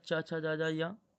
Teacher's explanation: च वर्ग तालु से बोला जाता है।